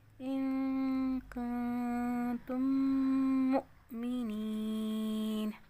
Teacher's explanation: ان کنتم مؤمنین، میم مشدد ناک میں آواز لے کر جائیں گے اور یہاں پہ میم کا میم میں ادغام ہو رہا ہے، یعنی پہلے والی میم کو ہم نے دوسرے میم کے ساتھ داخل کیا، حمزہ پہ جھٹکا دیں گے